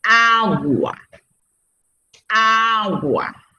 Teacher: la palabra es grave porque lleva la mayor fuerza de voz en la penúltima sílaba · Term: Palabra grave